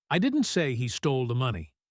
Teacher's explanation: the spotlight is on the word I.